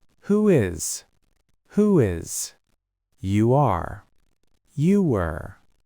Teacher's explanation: If your lips are round, you get a W bridge.